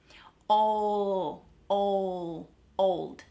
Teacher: So the tongue is placed behind my teeth in the same position as it would for a T. It's on that little ridge that's behind your teeth, not touching the back of your teeth, okay?